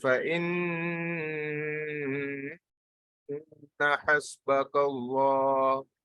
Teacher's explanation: You see, I went from up, down, and again up, and then I continue.